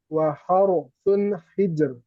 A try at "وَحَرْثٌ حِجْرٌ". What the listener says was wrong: Jangan terjeda. Waharsun. Nah, bukan. Waharsun hijar.